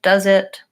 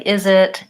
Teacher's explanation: leave my voice on and use a Z sound rather than an S